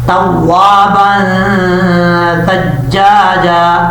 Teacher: نون تنوین کا ایک الف کی مقدار غنہ کر کے پڑھے جائیں گے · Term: اخفا